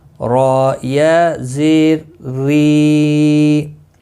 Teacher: یہاں را باریک پڑھا جائے گا زیر کی وجہ سے۔